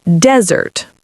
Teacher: So, desert as a noun is desert, stress on the first syllable.